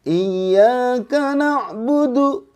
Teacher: Nah, pas masuk bayati harus lebih tinggi. Lebih tinggi dan oktavnya seimbang.